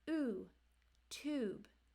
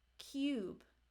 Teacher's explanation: Now there's two long U's. There's a U without the Y sound as in oo, tube. And with the Y sound, which in the IPA is actually a J, cube. So it has a U, cube, versus oo, tube. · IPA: /uː/ or /juː/